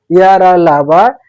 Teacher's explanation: जब इनका उच्चारण करते हैं तो हमारे जो मुखांग है यानी जो हमारे जीभ, दांत, ओठ हैं इनका जो स्पर्श है पूर्ण रूप से स्पर्श नहीं होता। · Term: अंतस्थ व्यंजन